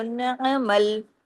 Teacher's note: عین کو جماؤ کے ساتھ، نعمل، عین کو عین کی طرح، اس کو الف کی طرح نہیں پڑھنا